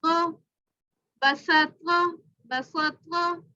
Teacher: یہ یاد رہے اگین کہہ رہی ہوں اس کو موٹا کر کے پڑھیں گے, زبان اوپر پیچھے سے اوپر ہوگی تو یہ موٹا پڑا جائے گا. قا زبر قا بسط قا بسط قا.